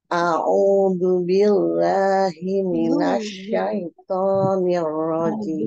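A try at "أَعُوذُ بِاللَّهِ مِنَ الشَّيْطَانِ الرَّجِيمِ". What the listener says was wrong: Bunyinya gini, Bang. Jangan zu. Zu huruf za. A'udzu.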